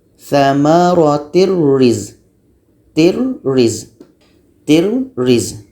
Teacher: Ini tanwin bertemu dengan roh, tanwin hilang, masuk kepada bunyi roh.